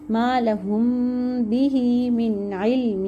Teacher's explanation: ہا کو لمبا کرنا ہے، لیکن کتنا لمبا کرنا ہے؟ بہت زیادہ لمبا بھی نہیں کرنا، 2 کاؤنٹس کرنا ہے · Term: حرف مد